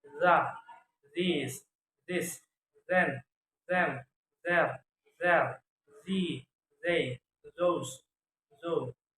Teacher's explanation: Voiceless dental fricative sound tha, thin, thief, thin, thick, thing, think, three, trail, through, through. Voice dental fricative sound